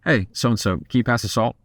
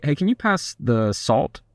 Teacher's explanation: When you go down, it sounds like you're making a firm statement. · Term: lower note